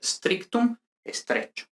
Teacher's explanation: el grupo CT se convierte en che · prótesis de e ante S líquida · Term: e protética